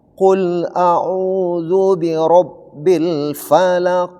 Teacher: Di sini qo terakhir itu diwakafkan maka dia berubah menjadi qalqala. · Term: Qolqala kubra